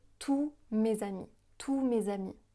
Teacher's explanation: on ne va pas prononcer le S de tous